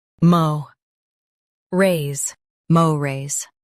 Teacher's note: Stress mo and keep rays light.